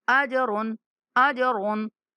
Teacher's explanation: وعملوا الصالحات، فلهم أجر غير ممنون. أجر، आज जीम साकिन आ रहा है इसलिए इसके ऊपर कलकला करना है, हिला के पढ़ेंगे